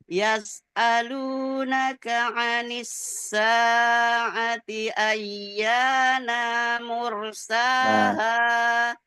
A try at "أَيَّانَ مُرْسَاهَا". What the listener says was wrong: Enggak panjang, enggak panjang. Ayyana bukan ayyana.